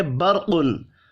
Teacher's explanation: را ساکن سے پچھلے حرف کے اوپر زبر ہے، را کو پر پڑھنا ہے